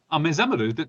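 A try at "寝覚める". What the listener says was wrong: no, but with an N in the beginning. Ne-zameru.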